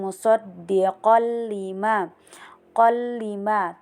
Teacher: qolima terdapat hukum bacaan idgam bila gunah di sini karena tanwin itu bertemu dengan lam jadi dibaca lebur